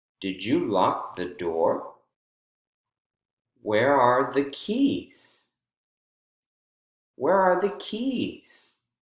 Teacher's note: Keys has falling intonation.